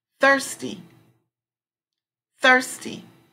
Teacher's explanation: The strong syllable would come over thir.